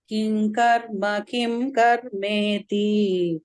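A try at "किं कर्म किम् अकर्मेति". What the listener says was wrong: Kima karmeti, not kim. King karma, kima karma. I'll split it up for you. Kim karma, what is karma? Kim akarma, what is akarma? Kim karma, kim akarma iti. So it becomes kim karma, kima karmeti. Okay, so you cannot say kim karmeti.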